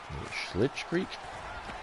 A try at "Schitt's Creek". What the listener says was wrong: No L. Schitt's Creek.